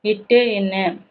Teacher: இட்டு என்னன்னா நாவின் நுனி அன்னத்தின் நுனியை தொடுவதால் பிறக்கிறது. நாவோட நுனி வந்து அன்னத்தோட நுனியை தொடுவதால் பிறக்கிறதா என்ன அப்படின்னா இட்டு இன்னு.